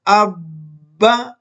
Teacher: درمیان میں آواز تھوڑی سی روک دی لیکن آواز کٹی نہیں ہے، سانس روکا نہیں ہے